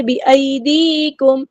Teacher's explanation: بِأَيْدِيكُمْ یا لینا ہی نرمی سے موڑیں گے. یا مد آئیے 2 کاؤنٹ لمبا کریں گے، میم ساکن پہ شفوی ہو رہا ہے، ٹائم نہیں دینا